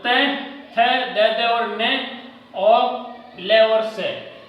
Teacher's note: त, थ, द और न और ल और से, ये दांत से उच्चारित है। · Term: दंत्य